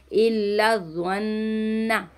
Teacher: इसको जन्ना नहीं पढ़ना, ज़ा में सिटी नहीं आएगी, मोटा करके पढ़ना है और नून मुशद्दद का गुन्ना करना है